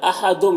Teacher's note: تنوین کے بعد میم ہے تو یہاں پر ادغام ہوگا، اس کو ادغام ناقص کہتے ہیں، غنہ کے ساتھ میں پڑھیں گے